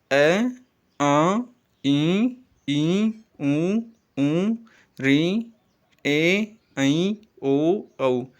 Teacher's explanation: इनके उच्चारण में आपने देखा होगा कि मैंने नासिका का प्रयोग किया है। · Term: अनुनासिक वर्ण